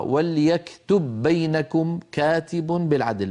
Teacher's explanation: فادغمنا الباء الاولى في الثانيه فصارتا باء واحده مشدده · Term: أدغمنا